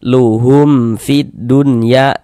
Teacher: tidak berdengung, baca pendek saja